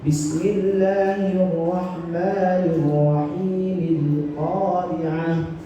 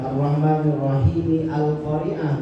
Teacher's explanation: langsung dibaca alif lam qamariyahnya dengan disambung dari huruf mim dalam bacaan bismillah